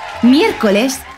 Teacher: su sílaba tónica es la antepenúltima.